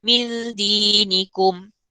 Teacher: Kita kena sembunyikan lidah, bunyi nun tu. Kita kena sembunyikan bunyi nun tu dengan tidak melandingkan lidah pada lelangit. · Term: hukum ikhfa